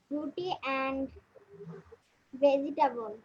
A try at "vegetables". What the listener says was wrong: ভেজিটেবল না, কথাটা ভেজিটেবলস। ভেজিটেবলস না, ভেজি কোনো কথা হয় না, ভেজি হয় না, জি এর পরে উচ্চারণ ইয়ার মতো হবে না, ইয়ার উচ্চারণ হবে না। ভেজিটেবলস, যেমন জুয়েলারি বলবো না আমরা, জুয়েলারি, হ্যাঁ এরকম। So we have ভেজিটেবলস।